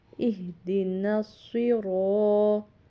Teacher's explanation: را کے اوپر زبر تھی، آگے الف تھا، تو اس کو زبر کی وجہ سے بھی موٹا پڑھنا تھا را کو، اور لمبا ہم نے ایک الف کے برابر کریں گے، کیونکہ اس کے حروف مدہ کے رول سے جب حرف کے اوپر زبر ہو اور آگے الف آ رہا ہو تو پھر وہ ایک الف کے برابر لمبا کرتے ہیں۔ · تو کا تلفظ بھی موٹا ادا کرنا ہے